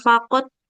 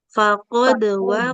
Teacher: Qalqalahnya jangan terlalu lemah ya. Jadi kayak nggak memantul. Jangan faqad.